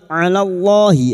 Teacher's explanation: Sekarang di sini kita wasal atau terus kita uraikan pada kalimat alallahi lam jalalah yang didahului fathah kita baca tafkim